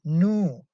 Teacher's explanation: the lips are very rounded for the vowel ooh as you can see your mouth is rounded as in new